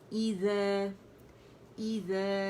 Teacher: الف ممدودہ جو ہے وہ ذال کی آواز کو 2 کاؤنٹ کے لیے کھینچ رہا ہے. ٹھیک ہے، تو آواز اوپر جائے گی. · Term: مد اصلی